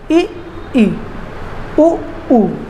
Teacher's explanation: बहुत कम आपका मुख खुलता है